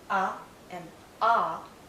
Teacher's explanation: In the case of 2 central vowel sounds, ah and ah, the tongue is more central.